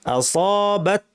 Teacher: আসাবাত তায়ের একটু বাতাস থাকবে